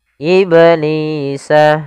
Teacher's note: ada bacaan qalqalah pada lafal huruf ba yang disukunkan